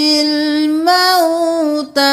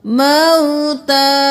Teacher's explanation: تا کھڑی زبر تا ایک الف کے برابر